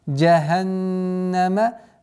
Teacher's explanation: Удержание в назализации в размере двух огласовок нуна.